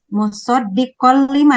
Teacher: Ya, Tanwin bertemu dengan lam itu namanya idgham bila gunnah. idgham bila Gunnah.